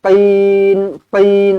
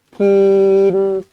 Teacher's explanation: Qin tebal. Kalau kaf, kin, itu salah lah.